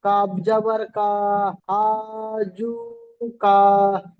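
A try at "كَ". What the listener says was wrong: কা বলে টানা যাবে না ভাই, টান হয়ে যাচ্ছে।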